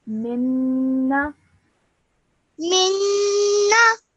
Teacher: So you have to produce that gunna sound for 2 seconds. So hold that noon sound in your nose for 2 seconds. Minna. Minna Excellent.